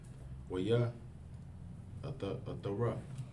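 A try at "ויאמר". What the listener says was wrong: No, that's a ma. Well, Yah Amar.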